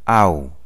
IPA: aʊ